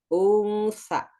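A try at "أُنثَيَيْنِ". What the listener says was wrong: Kayak lidahnya coba inget-inget ini. Bacanya tanpa nun, tapi sa-nya bertasydid. Gimana bacanya?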